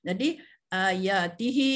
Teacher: Kategori dia termasuklah dalam mad munfasil ya. Kategori dia termasuk dalam kategori mad munfasil kerana dia dibaca dengan 4 atau 5 harakat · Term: mad silah tawilah